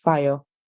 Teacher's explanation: The British would say using the schwa sound, so we hear fire.